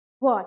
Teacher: वह बोलते हैं तो ऊपर वाला दांत नीचे वाले ओष्ठ में टच होता है